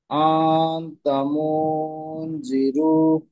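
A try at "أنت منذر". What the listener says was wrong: হ্যাঁ, জিরু, রয়ু রু টানাবে না।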